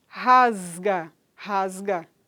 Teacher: Então, em final de sílaba vai haver essa variação dialetal, porque o som que vem depois desse S aí, ele é um som que é o GAN, não é? Que é um som que é vozeado, que vai exercer influência nesse S, e ele vai ser produzido como Z, não é? Rasga.